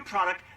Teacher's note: To pronounce product, have in mind that the size of the syllable indicates where the accent or stress is. In this case, the accent is in the first syllable, corresponding to prod.